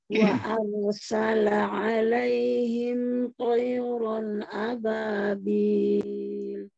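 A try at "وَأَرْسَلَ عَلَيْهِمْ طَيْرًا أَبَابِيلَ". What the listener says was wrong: Ini lebih bagus, masya Allah.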